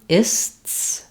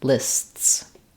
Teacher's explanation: there's a little Interruption between the S sounds